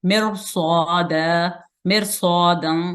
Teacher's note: ये लफ्ज रा साकिन है लेकिन आगे इसके मुफख्खम हरूफ में से स्वाद आ रहा है, इसलिए हम इस रा को मोटा पढ़ेंगे